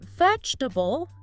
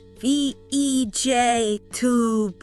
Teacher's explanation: But in you know natural flowing speech those middle sounds the unstressed ones they tend to get squished or just drop out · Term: vowel reduction